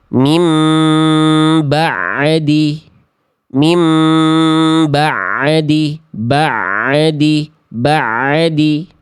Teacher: ada bunyi tambahan setelah bunyi ain sukun